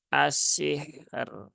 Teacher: ro dan rnya dibaca tipis